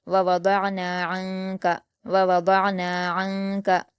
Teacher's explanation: नून साकिन की आवाज को नाक में छिपाकर गुना के साथ पढ़ेंगे